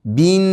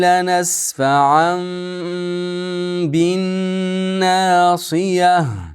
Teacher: Tanvinga ushab turamiz. bin nunni gunnasini qilamiz.